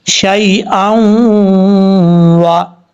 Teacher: غنہ کریں گے 1 الف کی مقدار, نون ساکن کا اخفا ہوگا. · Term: ادغام یرملون